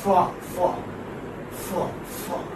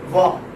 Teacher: the first one is voiceless and the second one is voiced.